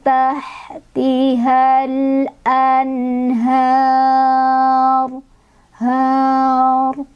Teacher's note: ra-nya tebal, sebelumnya fathah